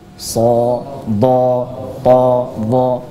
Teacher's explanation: huruf yang tebal itu adalah apabila kita berikan harokat fathah, maka vokalnya terdengar sebagai suara O. Jadi, bunyinya adalah O. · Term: huruf tebal